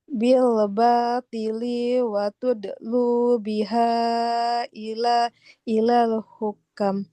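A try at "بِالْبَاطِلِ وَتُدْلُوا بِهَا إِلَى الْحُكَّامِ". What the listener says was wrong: Masih panjang lamnya. Bil batili wa tudlu biha ilal hukam. Nah, kalau kafnya baru panjang. Ilal hukam. Ilal hukam. Fathah bertemu alif panjang.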